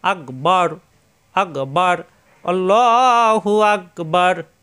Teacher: এখানে অক্ফ হবে, অক্ফ হলে লাস্টের আখরে আমরা জানি সাকিন হয়ে যায়, এখানে সাকিন হলে এই বা মিলবে রয়ের সাথে, বার, র সাকিন র মোটা হয়ে যাবে